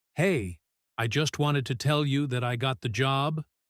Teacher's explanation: with a flat, quiet voice and a drop at the end, you would know immediately that something is wrong.